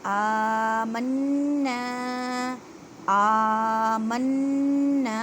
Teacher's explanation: نون مشدد ہے، گنہ کریں، ایک الف کی مقدار میں کھینچ کر پڑھیں